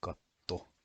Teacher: is pronounced as a katto with a long T sound